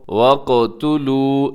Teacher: یہاں قاف کے اوپر جب جزم آتی ہے تو اس پہ قلقلہ کیا جاتا ہے، کیونکہ قاف حروف قلقلہ میں بھی ہے اور موٹا بھی پڑھا جاتا ہے۔